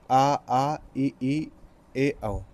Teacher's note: अव्रतमुखी, जिसमें उच्चारण में होठ गोल नहीं होते